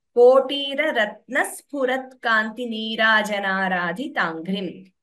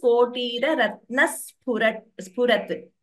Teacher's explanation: So there the Dvitvam is very prominently heard. The S is doubling.